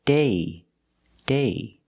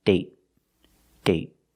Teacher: with date, we see the vowel is shorter because you have a stop T at the end.